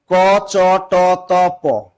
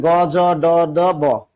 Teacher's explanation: এখানে দেখেন অল্প প্রাণ ধ্বনি ক, চ, ট, ত প শ্বাস কম লাগছে এটা অল্পপ্রাণ